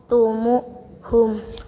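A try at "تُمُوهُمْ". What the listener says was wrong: Tumuhum panjang ada wawu mati ya.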